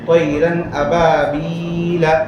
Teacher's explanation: تنوین نون ساکن کو بغیر گننا کے ظاہر کر کے پڑھنا ہے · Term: اظہار